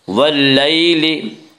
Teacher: یا لین وہ یا جو ساکن ہو اور اس سے پہلے زبر ہو، یا لین کو نرم آواز کے ساتھ جلدی پڑھیں گے۔